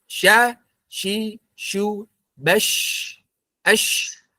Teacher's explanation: dari segi udara plus dari segi suara, huruf shin itu mengalir